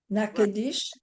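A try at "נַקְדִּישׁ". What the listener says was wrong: nach, dish. Remember those two dots are silent in the middle of a word, The shiv, it's the shiv, the two dots are silent.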